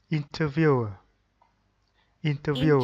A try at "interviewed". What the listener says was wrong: interviewed, interviewed. Okay, with letter D.